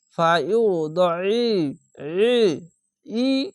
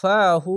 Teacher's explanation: টেনে পড়বেন খার আবার এক আলিফ টেনে পড়বেন ফায়ু দই ফাহু আইনটিকে মোটা করে এবং গলা চিপে আইনটিকে উচ্চারণ করবেন